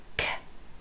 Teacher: the tongue moves to the back and forms a closure at the back of your throat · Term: velar sounds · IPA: /k/ & /g/